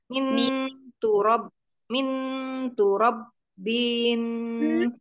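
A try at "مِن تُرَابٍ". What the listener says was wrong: Bukan turab. Turo dua harokat. Ro-nya dua harokat.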